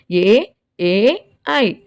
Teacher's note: నేర్చుకున్నాం తాలవ్యములు అంటే ఏమనుకున్నాం దవడ నుండి పుట్టినది అని అనుకున్నాం ఇక్కడ ఏంటిది కంఠ తాలవ్యములు కంఠము మరియు దవడల నుండి పుట్టినవి